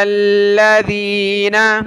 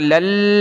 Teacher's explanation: لام کو لام کے ساتھ ملا کر اس لام کو ہم نے سختی کے ساتھ پڑھنا ہے۔ لام لام زبر لل، لام زبر لا، لل ذال یا زیر ذی، نون زبر نا۔